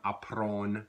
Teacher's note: we just kind of extend that nasalized vowel sound